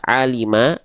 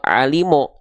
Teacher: atas atau sering disebut dengan istilahnya adalah fathah itu bisa jadi dibaca dengan vokal a kalau keluarnya vokal a berarti dia termasuk ke dalam huruf yang tipis tapi bisa jadi dia dibaca dengan condong seperti vokal o Maka kalau vokal O dia termasuk ke dalam huruf yang tebal